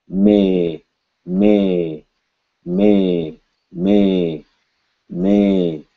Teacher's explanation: M is a nasal consonant, you're going to feel vibration in your nose. But when you say A, you shouldn't.